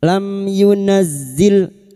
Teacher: idhar safawi mim sukun dibaca jelas tanpa mendengung lam yunazzil masuk pada huruf zain yang bertasdid yunazzil bihi hi